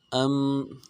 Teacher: حمزہ کو میم کے ساتھ ملانا ہے، میم ساکن میں غنہ کریں گے